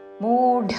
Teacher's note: రెండు దీర్ఘములు ఢ మహా ప్రాణాక్షరము